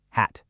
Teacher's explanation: My mouth opens up really wide getting ready for that big a vowel. So that's a third totally distinct physical sound, a third phone.